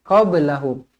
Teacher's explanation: huruf ba qalqalah sughra dibaca melantun, jangan baca qablahum tak nak, qablahum.